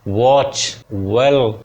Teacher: दोनों होठों को गोल करके वाह ऐसे बोला जाता है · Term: बाइलेबियल वा